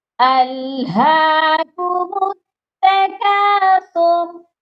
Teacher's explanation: ہا کی آواز سینے سے آئے گی. الہاکم التکاثر اور سا کو نرمی سے پڑھا جائے گا.